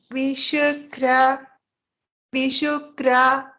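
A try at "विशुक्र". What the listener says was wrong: Tra. Tra. Ma'am, please don't open your mouth. What is short? We have to pronounce it only as a short sound. Which is a long one, we shouldn't be interchanging.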